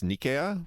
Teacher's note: in Greek it's Nicaea with stress on the first syllable